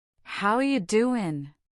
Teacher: voice goes up on how you doing to show a question and warmth